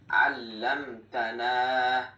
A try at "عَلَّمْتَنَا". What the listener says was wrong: এইখানে তাসদিদ আছে, তাসদিদের উচ্চারণ কয়বার? দুইটা। হ্যাঁ, হলো না, দুইবার। দুইবার হলে আল্লামতানা।